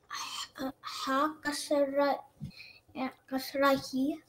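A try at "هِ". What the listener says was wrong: Yeah, ha should be softer.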